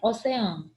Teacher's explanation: Mas quando eu faço a separação silábica, eu percebo que eu tenho um hiato, porque as vogais ficam separadas